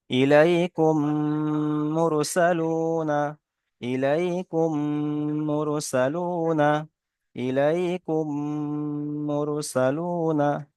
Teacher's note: মিমকে মিমের সাথে মিলিয়ে এককালী পরিমাণ গণনা করে পড়তে হয়। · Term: ইদগামে সাফাবি